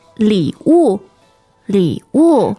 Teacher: And the tones for 礼物 are third and fourth.